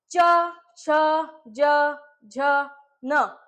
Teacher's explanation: आता जिभीच्या मधातला भाग जो आहे, मधातला, तो थोडा वर टेकल्यासारखा करते. बरोबर आहे. वर टाळूकडे टेकल्यासारखा. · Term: तालव्य